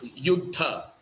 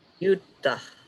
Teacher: The DH is aspirated H with an air.